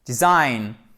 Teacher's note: l'accent tonique est sur la seconde syllabe